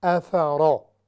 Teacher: افرا، پھر را مفخمہ ہے یعنی ہیوی ہے، را پر پڑی جائے گی، اور اس کی وجہ چونکہ اس پر فتحہ ہے، زبر ہے، اس وجہ سے یہ را ہیوی ہوگی